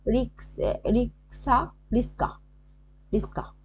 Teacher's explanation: আচ্ছা, যেটা হচ্ছে বর্ণ বিপর্যয় হয়, মানে বর্ণ কিছু পরিবর্তিত হয়নি, ঠিক আছে, সেখানে শুধু ধ্বনি বিপর্যয় হয়ে গেছে, মানে একটার জায়গায় একটা, রিক্স রিক্সা রিস্কা রিস্কা, ঠিক আছে, এরকম হয়, মানে একে অপরের স্থান চেঞ্জ করে ফেলেছে, এরকম হয়ে যায়।